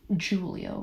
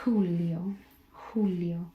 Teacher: In Spanish, it sounds much more like an H. So you breathe into it.